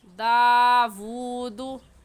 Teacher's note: کھڑی زبر 1 الف کے برابر، الٹا پیش 1 الف کے برابر کھینچ کر پڑھیں گے، اور پیش کو بغیر کھینچے اور بغیر جھٹکا دیے ہوئے پڑھیں گے